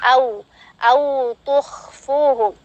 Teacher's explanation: Kemudian di depan hamzah ada waw. Waw sukun dihukumi dengan harful lin, tidak dipanjangkan melainkan dilembutkan saja. Au tuh dengan menyempurnakan harokat daripada waw sukun itu sendiri dengan cara memonyongkan kedua bibir secara sempurna.